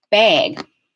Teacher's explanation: when i say bag the vowel is distorting and becoming a diphthong